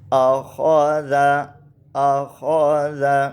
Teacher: اور آگے ہے حمزہ زبر آ، خو زبر خو، زال زبر زا، آخوذ۔ یہاں آخوذ میں خوا موٹا ہے، اور اس کی موٹے ہونے کی جو صفت ہے اس کو بھی باقی رکھ کے ہم نے پڑھنا ہے